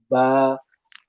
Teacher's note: उसके बाद बताया था ब का मखरज यह है दोनों होठ मिलकर और दोनों होठ में जो गीला हिस्सा होता है तर हिस्सा होता है तर और अंदर की जानिब अंदर का होठों का जो गीला हिस्सा होता है वो दोनों होठ मिलकर बा अदा होगी होठ से और भी हुरूफ अदा होते हैं लेकिन ब दोनों होठ मिलकर यानी होठों का सरी वाला अंदरूनी हिस्सा मिलकर ब अदा होगी और बा की आवाज हमेशा बारीक रहती है। · बा की आवाज हमेशा बारीक रहती है। कभी मोटी नहीं होगी।